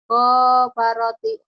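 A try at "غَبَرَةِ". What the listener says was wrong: salah. Orang nggak ada yang panjang.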